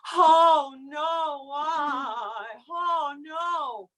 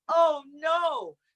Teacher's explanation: there's the aspirate onset there's the glottal onset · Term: onsets